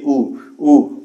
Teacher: उ बोलिए उ उ, ओठ क्या हो जा रहा है, गोल हो जा रहा है ना, तो बिल्कुल यह वृत्तमुखी कहलाएगा।